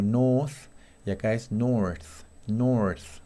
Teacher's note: Acordate que las diferencias entre el inglés británico y americano, cada vez que aparece la R, es que en inglés americano la R se pronuncia bastante, o sea, se pronuncia bien. Entonces acá tengo north y acá es north, north, si la pronuncio la R.